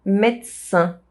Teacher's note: The S sound modifies the D sound and it becomes a T sound.